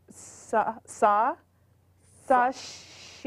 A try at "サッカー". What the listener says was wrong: い え 、 し じ ゃ な い で す 。 そ れ は 小 さ い つ 、a ▁little ▁つ 、which ▁has ▁no ▁pronunciation ▁by ▁itself, ▁but ▁makes ▁さ 。